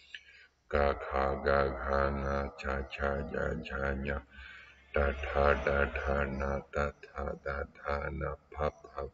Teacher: on remonte tous les points d'articulation vers le devant de la bouche, et en finissant par les nasales